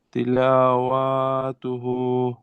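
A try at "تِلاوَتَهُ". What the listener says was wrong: اب دیکھیے یہ واو پر زبر ہے نا، واو کے اوپر خالی زبر ہے، الف نہیں ہے. اس لیے اس کو جلدی پڑھنا ہے. تلاوتو. تلاوتو ہو.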